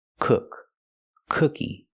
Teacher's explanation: the word cookie has a short sound uh like book and look